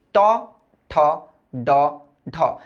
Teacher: দেখো জিভটা না একটু উল্টায় গেছে, উল্টায় যায় তোমার ছাদে যায় বাড়ি খেতেছে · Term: মূর্ধন্য ব্যঞ্জন